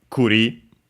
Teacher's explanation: the accent is on the last syllable